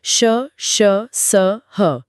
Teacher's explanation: इन चारों को बोलते समय हवा मुंह के किसी हिस्से से रगड़ या घर्षण खाकर बाहर निकलती है जिससे एक हल्की सी गर्माहट या सीटी जैसी आवाज पैदा होती है। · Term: ऊष्म व्यंजन